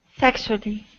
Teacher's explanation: this word is pronounced sexually so the stress is at the very beginning